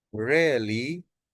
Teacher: rise and fall, when the voice rises and then falls